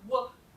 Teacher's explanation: So these are labial velar, in that your tongue is back here where you would have K or G, but then your lips are doing a thing, your bilabial thing